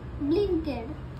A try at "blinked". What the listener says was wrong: ब्लिंकेड नाही, ब्लिंक्ड म्हणायचं. येस, त्याला म्हणतात ब्लिंक्ड.